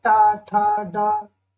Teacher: मूर्धन्य व्यंजन वो होते हैं जो ऊपर तलवे यानी मूर्धा के द्वारा जो बोले जाते हैं